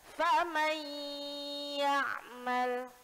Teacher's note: Jadi bacanya bukan faman ya'mal, tapi masuk ke huruf ya. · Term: idgham